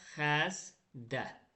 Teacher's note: Yenə də ikinci kar samiti özünün cingilti qarşılığı kimi tələffüz olundu.